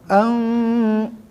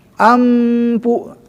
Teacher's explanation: Nah, ikhfa. Ikhfa samar-samar berdengung. Samar. Harus dengung ya, biar sempurna.